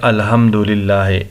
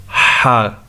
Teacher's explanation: تجوید کے حوالے سے دیکھتے ہیں، ہم اکثر سنتے ہیں کہ لوگ پڑھتے ہیں الحمدللہ، اس ہا کو ہا کے ساتھ بدل کے پڑھتے ہیں، جو کہ غلط ہے، اس سے معنی بدل جاتے ہیں۔ ہا کو حلق سے ہم نکالیں گے اور اس میں تھوڑی سی سختی، ہا، تب جا کے ٹھیک ہوگا۔